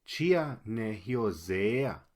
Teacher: Nótese que la palabra hyo, ahí queda el acento. Pero cuando se le agrega el zea, se mueve el acento a esa segunda parte. Y esa E es larga.